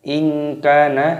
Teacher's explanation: nun sukun bertemu dengan kaf, hukumnya dibaca ikhfa, disamarkan. In kana, kanya panjang ada tanda alifnya.